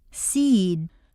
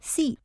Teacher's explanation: a single syllable word will have a longer sound to it seed takes longer to say than see